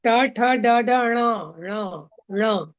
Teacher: आपकी जीभ ऊपर मूर्धा में सटेगी, ऊपर जाएगी तब ण होगा